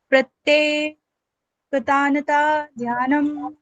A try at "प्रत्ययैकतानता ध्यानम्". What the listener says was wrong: यहाँ पे ना प्रत्ययिक तानता ध्यानम, यहाँ 2 या है। अगर प्रत्येक बोलते हैं प्रत्येक तानता ध्यानम तो गलत हो जाएगा। प्रत्ययिक तानता ध्यानम, ठीक है। प्रत्ययिक प्रत्येक नहीं, प्रत्यय बोलिए, पहले बोलिए प्रत्यय, यहाँ तक। अब बोलिए यैक तानता ध्यानम।